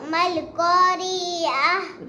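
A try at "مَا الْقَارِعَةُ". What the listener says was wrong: री को लंबा क्यों करती है? अल क़ारिअतु मल क़ारिअ, इधर देखो सबक की तरफ। अल क़ारिअतु मल क़ारिअ,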